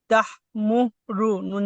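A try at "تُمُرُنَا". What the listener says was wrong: মাশাআল্লাহ, ইজরা করেন।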